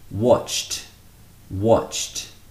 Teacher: Watch. Watch finishes with the ch. Therefore, it takes on a t sound, the t sound. T. Watch becomes watched.